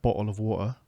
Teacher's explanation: I still have that thing where I don't pronounce all of the T's, like, the classic British bottle of water.